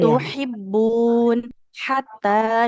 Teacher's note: itu huruf H di tengah tenggorokan kita